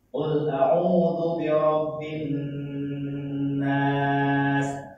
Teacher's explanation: Nun tasdidnya kalian ditahan lah.